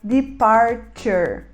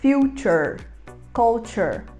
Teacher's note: o T antes desse sufixo fica chiado, então a gente pronuncia ele junto com um X, um CH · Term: chiar esse T